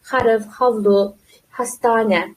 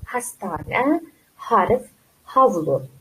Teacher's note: Qattiq H yo'q turkchada. Qattiq H'lar o'rniga ham yumshoq H'ni qo'yib ketishadi.